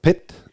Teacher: Lo acompañas de una fibrilación sonora, que es el sonido PET, ¿no? Pero la T última del mismo la haces retroflexiva, como si la aspiraras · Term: letra aspirada